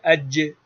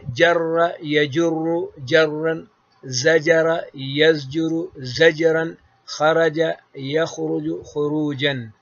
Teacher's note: پھر مخرج ہے بیچ زبان بیچ تالو سے یہ جیم نکلتی ہے